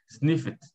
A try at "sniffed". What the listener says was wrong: Legal.